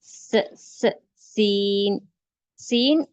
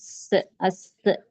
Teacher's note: सीन को हम सख्ती से पढ़ेंगे और उसमें सीटी की आवाज होगी। अस ऐसे और इसका मखरज भी बिल्कुल जा की तरह है।